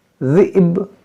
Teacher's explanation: دیکھیں یہاں پر ہماری سانس ٹوٹ گئی تو ہم کیسے پڑھیں گے، بعض لوگ صحیح سے نہیں پڑھ پاتے ہیں، اگر یہاں سانس ٹوٹتی ہے تو یہاں پر دیکھیں حمزہ ساکنہ ہے، اس پہ جھٹکا دیں گے اور با بھی ساکن ہو جائے گا